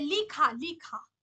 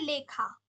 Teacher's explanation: পরবর্তী আকারের প্রভাবে পূর্ববর্তী ইকার এককারে পরিণত হল